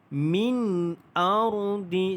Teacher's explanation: Sebab nun mati itu bertemu dengan huruf hamzah, maka dia adalah izhar syafawi. Izhar syafawi, tidak ada dengung, dibaca jelas tanpa dengung.